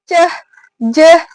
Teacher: dihasilkan dari lidah bagian tengah itu bertemu dengan titik artikulasi langit-langit keras, palatal. Nah, dia menghasilkan bunyi ceh, jeh gitu. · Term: bunyi paduan